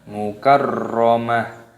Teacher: Yang benar mukarramah, karena di sini ketika waqaf adalah tak marbutoh maka berubah menjadi huruf ha ketika berhenti